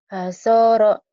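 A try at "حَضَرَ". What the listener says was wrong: Ini ada titiknya. Bukan hasor. Ha. Hadoro.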